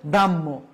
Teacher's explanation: হর সাথে ম যুক্ত হলে ম আগে উচ্চারিত হবে, পরে হ যুক্ত হবে